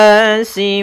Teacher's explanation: pada bacaan winanasi ya di sini ada alif lam syamsiah yaitu huruf alif dan lam yang ditulis tapi tidak dibaca sehingga langsung kepada huruf nun tasydid Kemudian pada lafal nunnya di sini ada bacaan gunah yaitu Nun